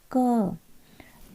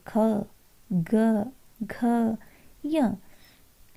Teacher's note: इनको हम बोलते हैं अपने कंठ से, यानी कि गले से। देखिए क, तो साउंड कहाँ से आ रहा है? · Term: क वर्ग